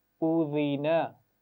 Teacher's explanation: درمیان میں زال کی آواز ہے, سیٹی کے ساتھ نہیں پڑھنا, ٹھیک ہے, بغیر سیٹی کے پڑھیں گے, زبان کی نوک اوپر والے دانتوں کے سرے سے لگائیں گے نرمی کے ساتھ